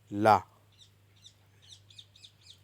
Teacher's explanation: तीसरा नोट है ला पार्श्विक जिसके उच्चारण में हवा जीभ के पार्श्व या बगल से निकल जाए।